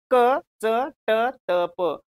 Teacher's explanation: क कंठ्य, च तालव्य, ट मूर्धन्य, त दंत्य, प ओष्ठ्य